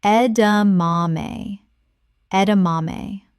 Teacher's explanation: Four syllables with the stress on the third.